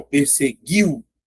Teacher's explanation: Então, ó, perseguiu, a letra I é forte, a letra U é fraca. Ditongo, decrescente, oral.